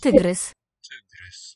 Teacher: And the Y is that, I think, high central, right?